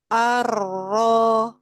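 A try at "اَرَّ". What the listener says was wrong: Lagi Bu, kadar tawasudnya double.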